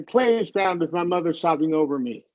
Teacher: Just all in a downward pitch